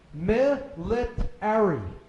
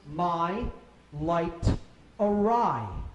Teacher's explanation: Military. Now just change the vowel sounds to long I sounds instead of short I